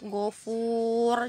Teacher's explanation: Kalau misalnya dia waqaf, ghafur, jadi nggak ada nunnya ya